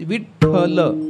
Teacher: व्याकरणाच्या दृष्टीने जर विचार केला तर व्याकरणामध्ये पहिला आणि शेवटचा वर्ण हा अल्पप्राण आहे, म्हणजे ज्याच्यात हकाराचं प्राबल्य कमी आहे, आणि मधला जो ठ आहे त्याच्यात महाप्राण आहे, म्हणजे त्याच्यात हकाराचं प्राबल्य जास्त आहे